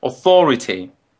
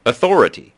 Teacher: The Brits put an aw sound at the beginning, authority. Whereas North Americans put a de-stressed sound, authority. And sometimes in the second syllable, you'll hear North Americans say ah instead of aw.